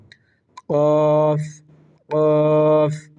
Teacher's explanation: কফ হচ্ছে জিহ্বার গোড়া উপরে মাড়ি দাঁতের উপরের সাথে লাগিয়ে, জিহ্বার গোড়া এর বরাবর উপরের সাথে লাগিয়ে, জিহ্বার গোড়া তার বরাবর উপরে তালের সাথে লাগিয়ে কফ কফ কফ। কফের মাখরাজ তথা কফ এর উচ্চারণ স্থান হচ্ছে জিহ্বার গোড়া তার বরাবর উপরের সাথে লাগিয়ে